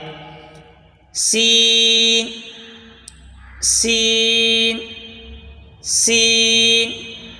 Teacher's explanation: سین سین سین، اس کا مخرج بھی زا والا مخرج ہے، یعنی زبان کی نوک اور دونوں دانتوں کے اندرونی کنارے سے سین ادا ہوتا ہے